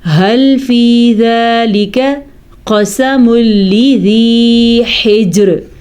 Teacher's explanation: میں نے را باریک پڑھی ہے، کیونکہ را ساکن، را سے پہلے جیم بھی ساکن، پھر جیم سے پہلے حرف کے نیچے زیر ہے